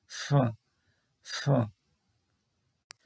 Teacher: উপরের পাটির দাঁত আর নিচের ঠোঁট একসাথে করে তারপর হচ্ছে তার মাঝখানে বাতাস বের করে এই উচ্চারণ করা হয়